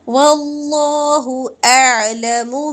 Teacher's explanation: واللہ، اللہ کا لام پر کریں گے اور اللہ کے لام سے پہلے زبر ہے تو موٹا پڑا جائے گا لام